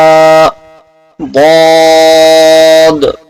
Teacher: और पूरी हरूफ तहजी के अंदर ये जो हर्फ है यानी दाद, इसका जो मखरज है किनारा जुबान दाढ़ से मिलकर दाद अदा होता है